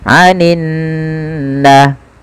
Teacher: kita baca dengan menahan suara nunnya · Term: gunnah